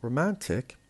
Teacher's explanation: Romantic has 3 syllables, and the stress is on the second syllable, the one in the middle, because romantic has IC at the end, and whenever we have IC, this suffix will change the stress to the one before the last.